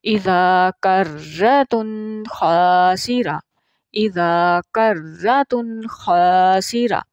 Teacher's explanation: غنہ جو ہے وہ اتنا نہیں ہوگا، کیونکہ آگے حروف حلقی میں سے لفظ ہے خا۔ ٹھیک ہے، خا پہلے بھی ہم نے یہاں پڑھا کہ یہ ابتدائی حلق سے ادا ہوتا ہے۔